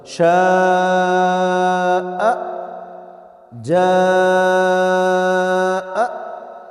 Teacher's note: حمزہ ہمیشہ جھٹکے کے ساتھ ادا ہوتا ہے، الف میں ایسا نہیں ہے، وہ ایک عام طریقے سے ادا ہوتا ہے۔ مثال کے طور پر شاء، جاء، دیکھیں درمیان میں الف ہے، کوئی جھٹکا نہیں لگا ہے، اینڈ پہ حمزہ ہے، جھٹکا لگا ہے۔